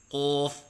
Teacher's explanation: ہونٹ گول کر کے پڑھنا جیسے قوف، یہ غلط ہیں